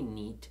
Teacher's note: you can feel the tongue release the roof of your mouth and then snap back up there in that hard palate area